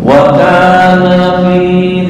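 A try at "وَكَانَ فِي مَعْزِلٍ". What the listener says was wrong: pendek. Karena kalau ini dipanjangin ntar jadi dua orang, berubah artinya.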